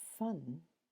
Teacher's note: we find the air escaping with friction through the narrowing left by the contact of the upper teeth and the lower lip